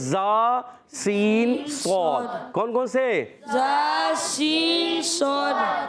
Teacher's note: زبان کی بالکل باریک نوک اور ثنائے سفلا و ثنائے علیہ، یعنی اوپر کے دونوں دانتوں کے نیچے اور اوپر والے دانتوں کے کناروں سے، اندرونی کناروں سے زبان کی جب بالکل باریک نوک ادا ہوتی ہے لگتی ہے تو ادا ہوتے ہیں زا سین صاد۔ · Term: حروف اصلیہ